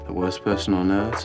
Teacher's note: in words like heard, first, and worst British would pronounce it with a schwa sound.